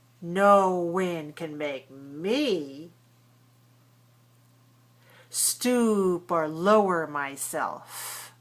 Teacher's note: stress the word me